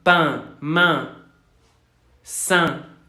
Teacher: la E nasal, parece una A.